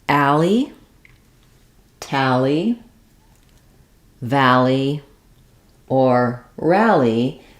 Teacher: the a sound is happening, it's stressed, and then the li sound is another syllable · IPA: /æl/